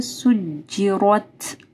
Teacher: را جو ہے اس کے اوپر زبر ہے، ٹھیک ہے، را موٹی پڑھی جائے گی · تا ساکن ہے تو ہمز ہوگا سجرت، یہ جو آواز آتی ہے نا اس کو ہمز کہتے ہیں، ٹھیک ہے۔